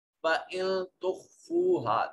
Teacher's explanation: فَإِن تُخْفُوهَا، نون ساکن کے بعد تا حرف اخفا ہے، نون کو اپنے مخرج میں چھپا کر پڑھیں گے۔ خا یہ حرف مستعلیہ میں سے ہے، اس کو موٹا کریں گے۔